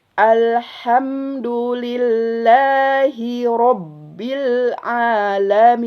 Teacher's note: Haknya itu jangan tertukar dengan ha yang di pangkal tenggorokan. Ha ini mahroznya adalah di tengah tenggorokan.